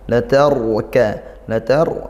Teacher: ro sukun didahului fathah dibaca tafkhim